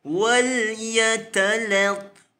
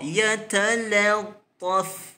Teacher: Seperti mana diingatkan oleh penulis, huruf lam di sini perlu dijaga agar nipis, tidak terkesan dengan huruf ta yang besar di sebelahnya.